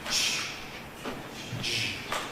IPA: ʧ, ʤ